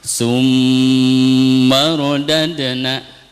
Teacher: Ini harus dibaca lebih dari 2 harokat ya, sampai dengan 3 harokat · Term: hunah lazimah